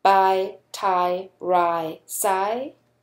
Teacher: It's because this is actually a complex vowel consisting of two vowels. You start like an A and you end like an E, giving you I. That's what's called a diphthong.